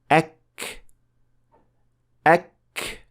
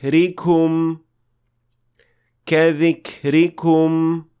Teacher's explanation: when the Arabic Kev is produced there is a slight gush of air or breath that is produced along with it we call that hems and this is most clear when Kev